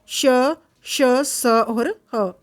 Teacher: जिन व्यंजनों का उच्चारण करते समय हवा के तेज गति से मुंह से रगड़ खाने के कारण ऊष्मा अर्थात गर्मी सी पैदा होती है उन्हें ऊष्म व्यंजन कहते हैं